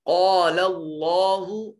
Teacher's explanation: قاف حرف مستعلیہ ہے اور اللہ اس میں جلالت کا ماقبل مفتوح ہے، اس لیے اس کو مفخم موٹا اور پر کر کے پڑھا جائے گا